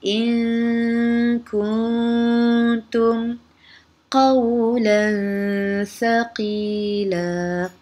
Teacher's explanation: Cara bacaannya, bunyi nun dibaca samar antara izhar dan idgham dengan dengung. Izhar pun tidak, idgham pun tidak, kita baca sama-samar. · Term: ikhfa hakiki